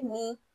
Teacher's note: نون کو کھینچ کر پڑھنا ہے اور غنہ کے ساتھ